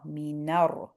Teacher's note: the na is joining into the ra here, jumping over the hamzatul wasl, jumping over the lam. Joining into the ra.